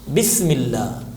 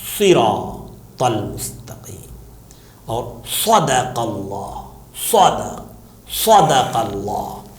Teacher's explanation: سین میں زیادہ سیٹی نکلے گی اور صاد میں تھوڑی سی کم سیٹی نکلے گی، مگر دونوں میں تھوڑی سیٹی رہے گی، سین میں بھی اور صاد میں بھی، سین میں کم صاد میں زیادہ۔ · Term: سیٹی کی آواز